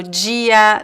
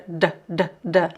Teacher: pronouncing the duh as a J uh is a Brazilian variation, right? In Portugal, the duh sounds like a du du duh, not like as a j. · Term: palatized